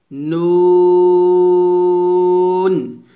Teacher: 9 নম্বর মাখরাজটা হচ্ছে জিহ্বার আগা তার বরাবর উপরে তালুর সঙ্গে লাগে, অর্থাৎ জিহ্বার আগাটা উপরের যে তালুটা, জিহ্বার যে অংশ ওটাকে তালু বলা হয়, ওই তালুতে লাগবে।